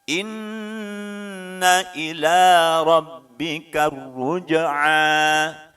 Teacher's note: inna nunnya bertasydid maka masuk dalam kaidah idgham bi gunnah, ditahan 2 harokat minimal dengungnya